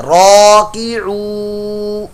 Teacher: واو ساکن سے پہلے پیش تو واو مدہ بن گیا، اس کو لمبا کرنا ہے، راکعو۔ نون زبر نا، یہ حرکت ہے، اس کو لمبا نہیں کرنا، راکعون، راکعون، تو اس میں علی مدہ، حرکت، واو مدہ اور حرکت کا قاعدہ ہے۔